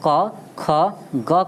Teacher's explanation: क ख ग का आपका उच्चारण कंठ से होता है, लेकिन ढ का आपका ढ का उच्चारण आपका कंठ से नहीं होता है